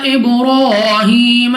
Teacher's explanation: با دوبارہ ہمارے پاس قلقلہ میں سے ہے تو جب ہم ادا کریں گے ہمیں اپنی آواز واپس سنائی دے گی۔ را پر کھڑا زبر 2 سیکنڈ تک لمبا کرنا ہے اور را کو موٹا یعنی پر پڑھنا ہے، را پر زبر را کو پر یعنی موٹا پڑھیں گے۔